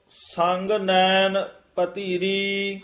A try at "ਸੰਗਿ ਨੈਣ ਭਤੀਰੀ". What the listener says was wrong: ਹਾਂਜੀ, ਪਾਵ ਮਲੋਵਾਓ, ਇਥੇ ਵਿਸਰਾਮ, ਸੰਗ ਨੈਣ ਭਾਤੀਰੀ। ਭਤੀਰੀ ਧੱਦਾ ਨਹੀਂ ਵਿੱਚ ਲਾ ਦੇਣਾ ਤੱਤੇ ਦੀ ਜਗ੍ਹਾ, ਯਾਨੀ ਮਿਹਨਤ ਨਾਲ ਹੀ ਸ਼ੁੱਧ ਕਰਨਾ। ਭਾਤੀਰੀ ਭਾਤੀਰੀ ਇਕੱਠਾ, ਪਤੀਰੀ ਨਹੀਂ ਕਹਿਣਾ ਹੈ।